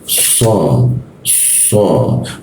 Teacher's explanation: huruf sha ya, lidahnya ditekuk di bawah, belakang gigi bawah.